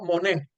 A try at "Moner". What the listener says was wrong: No, pronunciando la R.